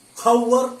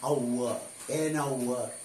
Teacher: എച്ചിന് ഉച്ചാരണമില്ല, H silent ആണ്